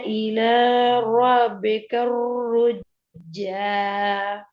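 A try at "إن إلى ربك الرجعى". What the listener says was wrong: ஜீம கலக்கோணும், ஐன் sound வரணும், அலிப்ல sound வரணும்.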